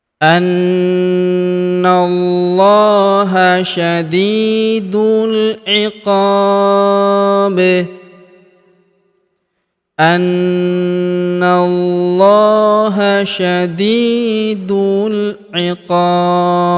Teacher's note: Huruf qa kita panjangkan 2, 4 atau 6 harokat karena di depan huruf qa terdapat alif sebelum huruf pemberhentian, dan huruf pemberhentian huruf B kita sukunkan atau kita matikan, dan karena dia sukun maka kita pantulkan atau kita qalqalahkan